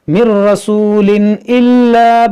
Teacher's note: یہاں تنوین کے بعد حمزہ ہے, یہاں پر اظہار کریں گے